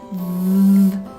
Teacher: So there is unvoiced F and voiced VV. The difference is that you add a little bit of voiced friction when you try to pronounce it. So in order to try to pronounce it, you need to put the top of your tongue in between your teeth and then you will try to see that the air is coming between the top of your tongue and your upper teeth.